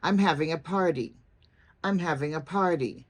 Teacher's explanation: In America, you finish by going down in pitch.